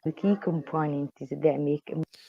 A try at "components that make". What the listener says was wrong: what sounds like we're getting a Z sound in there. key components that make that th. I think it's the th on that is a little bit too strong. Again, it's not about the th, it's about the ass sound. Trying to make the ass stronger. Components that make. That's how I would link that phrase. Components that make.